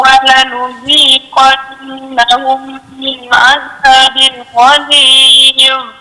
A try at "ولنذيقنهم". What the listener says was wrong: ولنذيقنهم dengung tak cukup ولنذيقنهم sekali lagi ولنذيقنهم من عذاب غليظ.